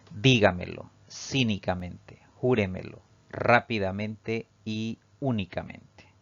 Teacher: llevan la mayor fuerza de voz al pronunciarlas en la sílaba denominada antes de la antepenúltima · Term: palabras sobresdrújulas